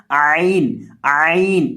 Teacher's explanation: عین کو حلق کے درمیان سے ادا کیا جاتا ہے، حلق کے بیچ سے ادا کیا جاتا ہے